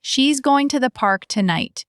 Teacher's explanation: So, natural stress would sound like she's going to the park tonight. You hear going park tonight strong, she's to the tiny.